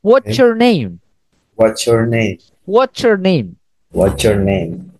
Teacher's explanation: ini bisa pakai huruf ada t bertemu dengan y y dibacanya sama dengan c